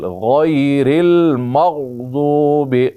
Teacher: غیر غین یا زبر غی، را لام زیر رل، غیر المغضوب، غین کو موٹا پڑھیں گے، اس کے بعد غاد ہے وہ بھی موٹا ہوگا، را باریک ہوگی۔